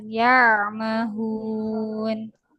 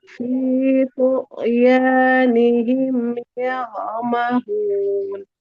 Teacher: Ainnya ada suara yang mengalir di pertengahan.